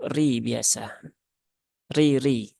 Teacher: Jadi mat asli itu ya mat tabi'i ya, tidak dibedakan. Kemudian roknya dia berbaris kasroh, maka dia dibaca dengan tipis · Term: tarkik